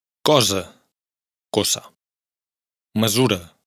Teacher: cuando está entre vocales y está sola se pronuncia como una s sonora. Recordemos que la diferencia entre las consonantes sordas y sonoras es que en las sordas no vibran las cuerdas vocales, mientras que en las sonoras sí vibran.